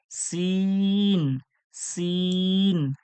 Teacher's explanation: ছোট সিন এর মধ্যে কোন সিটি আসবে না এটা সিম্পল ভাবে হবে